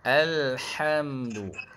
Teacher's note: Ha ha pedas ni dia ha pedas ni kedudukan atas sikit pada ha bulat. Dia betul-betul kat tengah engkung.